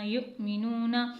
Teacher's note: اب یہاں پر حمزہ کیونکہ ساکنہ ہے تو یہاں پر جب بھی حمزہ ساکنہ ہوگا تو وہاں پر تھوڑا سا جھٹکا دے کر پڑھتے ہیں